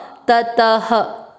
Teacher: त अ की मात्रा तो विसर्ग को पढ़ेंगे ह, ततः